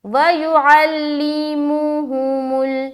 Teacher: ہماری جو پیش والی آواز ہے وہ مجہول بھی نہ ہو، معروف نکالنا ہے